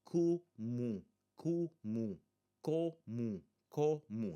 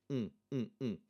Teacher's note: that last m, I'm not going to press my lips on that one